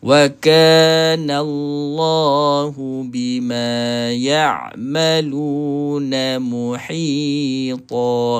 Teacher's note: Okey huruf ain secara tepatnya di tengah halqu. Dan yang kedua, jangan baca keluar melalui rongga hidung.